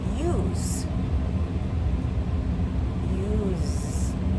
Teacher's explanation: Because the S sounds like a Z, you feel the vibrations. A little buzzing in your throat. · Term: voiced